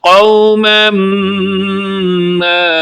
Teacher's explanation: قوما ما پر غنہ کریں گے اور دوسری ما کو آپ لمبا پڑھیں گے، کیونکہ اس پر مد منفصل ہے، ایک علامت ہے جس کا نام مد ہے، اور پھر اس کی آگے قسم مد منفصل ہے۔